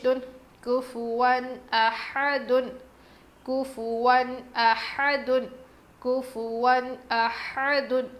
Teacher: واو پر تنوین ہے، اس کے بعد حروف حلقی میں سے حمزہ آیا ہے، اسی لیے ہم نون کی آواز کو ظاہر کر کے پڑھیں گے۔ ہا کی آواز بالکل کلیئر آنی چاہیے۔